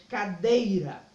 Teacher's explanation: a penúltima sílaba é a mais forte